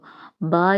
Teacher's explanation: അപ്പോ നമ്മൾ മൂന്ന് രീതിയിലുള്ള വിഭജനമാണ് ഇപ്പോ പറയുന്നത് പറഞ്ഞിട്ടുള്ളത് ഓഷ്ടി എന്ന് പറഞ്ഞാൽ നമ്മൾ പ എന്ന് പറയുമ്പോൾ രണ്ടു ചുണ്ടും കൂട്ടിമുട്ടുന്നുണ്ട് ബ എന്ന് പറയുമ്പോഴും കൂട്ടിമുട്ടുന്നുണ്ട് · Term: ഓഷ്ട്യാക്ഷരങ്ങൾ